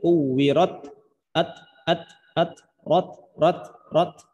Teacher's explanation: Ada bunyi, ada angin yang keluar pada huruf ta gitu. Jadi jangan cuma dibaca kuwirat gitu doang. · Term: sifat hams